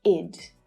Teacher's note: Firstly, ED can be pronounced as id. So this is an unstressed vowel sound, and it creates an extra syllable, which is always unstressed. So the sound is short and it's low in pitch. And it's pronounced like this when the regular verb in its infinitive form ends in a T or a D sound. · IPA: /ɪd/